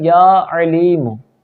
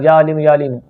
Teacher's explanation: عین حلقے درمیان والے حصے سے ادا ہوتا ہے